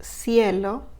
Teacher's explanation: the C in Spain sounds like a th in English